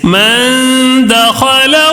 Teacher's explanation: 1 الف کے برابر، یعنی تھوڑا غنہ کرنا ہے، لمبا غنہ نہیں کرنا ہے. 1 الف کے برابر تھوڑا سا غنہ کر کے پڑھنا ہے، جیسے من دخلہ. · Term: نون ساکن کا اخفا